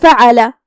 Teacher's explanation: ہم عین کو حلق کے درمیان والے حصے سے ادا کریں گے، جو کہ فا پہ اور عین پہ اور لام پہ تینوں پہ زبر ہے، تو ہم یہ سب حرکات کو برابر سے ادا کریں گے، کسی ایک کو کم نہیں کریں گے.